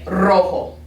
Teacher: when it's at the beginning of the word that's when it's that rolled r